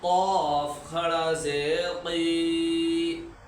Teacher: تو ہم ابتدا سے جب بھی پڑھ رہے ہیں تو اس کو بھی بتائیں کہ یہ بڑا قاف ہے، یہ زبان کی جڑ اس کے مقابل اوپر کے تالو سے ادا ہوتا ہے